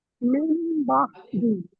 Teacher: নুন সাকিনের পরে বা এসেছে, তাই নুন সাকিনকে মিম দ্বারা পরিবর্তন করে এক আলিফ পরিমাণ গুণনা সহ পড়তে হবে। একে ইকলাব বলে।